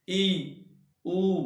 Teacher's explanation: उच्चारण करने पर मुख का सबसे कम खुलना, जो देखिए ये कौन से आते हैं, ई, ऊ और ऊ, यानी कि जब इनका उच्चारण करेंगे तो मुख सबसे कम खुलेगा। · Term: संवृत